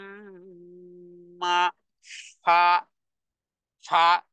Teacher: দুই ঠোঁটের মধ্যখান থেকে বাতাস সহ বের হবে